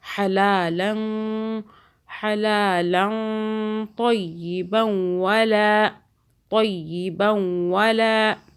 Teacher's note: رکنے کی صورت میں طیبا تو کو موٹا پڑھیں گے اور یہ یہاں پہ اخفا بھی ہو رہا ہے.